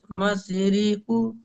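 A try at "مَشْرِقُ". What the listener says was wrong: মাস নয়, মাস। শিন আছে না, মিম শিন জাবার মাস। মাশরিকু হারাকাত, মাশরিকু।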